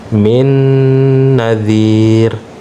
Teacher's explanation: Disertai dengan dengung dengan tempo 2 harokat. Ya, jadi dia agak ditahan sedikit ya.